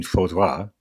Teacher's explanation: But here in spoken French, the il is dropped, leaving faudra.